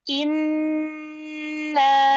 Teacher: Nun tasydid di gunnah yang panjang, gunnah akmal.